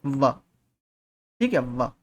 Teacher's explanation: ठीक है, व। वहां में आपका जो दांत है वो होठों पर टच करते हैं। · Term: दंतोष्ठ्य ध्वनि